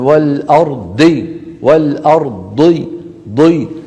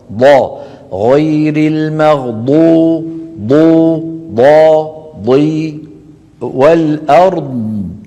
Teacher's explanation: كثير من الناس يعتمدون على طرف اللسان عند اخراج الضاد ها اذا اعتمدنا على هذا المكان سيخرج معنا دال مفخمه لن يخرج معنا ضاد